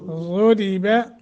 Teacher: ग़ुरिबा ज़ाद मोटा रा बारीक